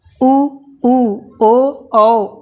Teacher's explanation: पश्च भाग यानी जीभ का पिछला हिस्सा उठेगा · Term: पश्च स्वर